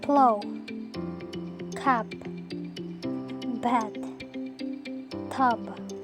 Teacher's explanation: language is the following stop consonants there are p and B the air is completely block by meeting both upper and lower lips